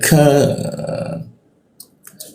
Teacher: Lidahnya kita turunkan sehingga rongga udara terbuka dan ada hembusan udaranya. Ika seperti itu, ada hembusan udaranya dia ka.